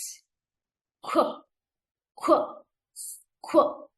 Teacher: Here, k sound and w sound. Together, we have to say it very quickly by rounding our lips and pushing the air.